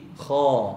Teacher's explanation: Mulut kena buka. Bagi dia keluar bunyi A betul-betul. Jangan campur bunyi O dalam sebutan.